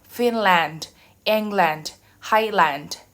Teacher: the word land will be reduced in the compound noun